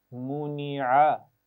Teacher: عین کے مخرج کا خیال رکھنا ہے اور عین کو صحیح ادا کرنے کے لیے نون کی آواز کو لمبا نہیں کرنا